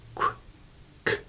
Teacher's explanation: Both of those are just air, aren't they? There's no voice.